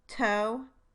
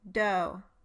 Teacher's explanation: the beginning, or onset, of voicing is somewhat delayed for the voiceless initial stops than for the voiced ones